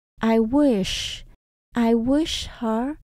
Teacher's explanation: Ở trong từ wish mình tận cùng là S và H, các bạn nhớ mình đọc âm sờ, cong lưỡi nhé.